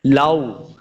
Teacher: لو، اس کو لمع نہیں کریں گے، واو کے اوپر اپنے ہونٹ گول کرنے ہیں